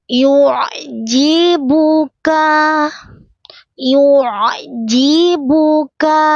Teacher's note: Ainnya pastikan dia keluar dari tengah-tengah tenggorokan.